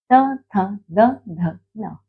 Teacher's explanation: दंत्य, अर्थात कि जब हम इन वर्णों का उच्चारण करते हैं हमारी जीवा दंत यानी कि दांतों से टच होती है।